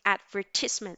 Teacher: the stress falls in the second syllable